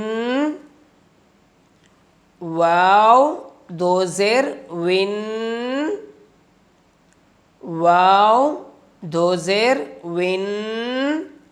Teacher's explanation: واو کو پڑھتے ہوئے ہونٹوں کو ناتمام گول کریں گے